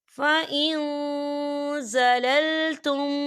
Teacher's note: فَإِن زَلَلْتُمْ، یہاں دیکھیں فَإِن، یہاں نون ساکن ہے اور نون ساکن کے بعد زا آ رہا ہے، اور زا جو ہے اکفا کا ورڈ ہے، تو ہم یہاں اکفا کریں گے، نون ساکن کی آواز کو ناک میں چھپائیں گے